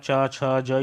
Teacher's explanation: गले के तुरंत ऊपर वाली जगह होती है तलवा, वहाँ जीभ टकराती है, वो तलवा बोलते हैं। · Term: तालव्य